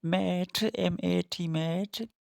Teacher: This is the sound in mat, M-A-T mat. The mouth passage is completely closed by the lips and to allow the air escape through the nose. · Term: bilabial nasal sound